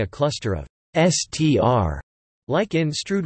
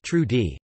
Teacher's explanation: some British, Canadian, American, New Zealand and Australian speakers may change the /s/ sound to /ʃ/ before /tr/ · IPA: [ʃtʃruːd]